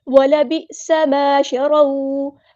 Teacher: وَلَبِئْسَ مَا شَرَوْا، ہم ساکن کی آواز میں کر دیں گے، سین کی سیٹی ہم واضح کریں گے، سین میں سیٹی آئے گی اور سین باریک پڑھیں گے